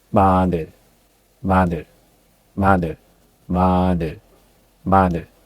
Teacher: Your lips cross gently, and the sound comes through your nose like M in mom. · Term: bium